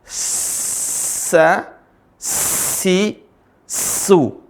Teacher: Ujung ketemu gigi seri bawah · Kalau ada titik tiganya jadi sya. Kalau tadi ujung lisan ketemu gigi seri bawah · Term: huruf s, huruf sin